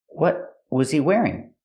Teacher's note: The T in what is a stop T.